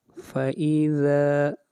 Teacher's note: ذا کو لمبا کریں گے، 1 الف کے برابر مد اصلی ہے